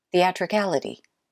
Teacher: the most stressed syllable is the fourth syllable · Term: main stress